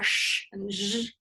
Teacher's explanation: Our palatal alveolar consonants are produced with the tongue blade further back between our alveolar ridge and our hard palate